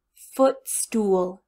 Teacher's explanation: school followed by a loose wide mouth book school book footstool you have a wide loose lips followed by the small tight Oh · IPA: /u/ vs /ʊ/